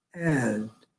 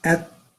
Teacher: if you say the word at then you can say at very quick because it's not voiced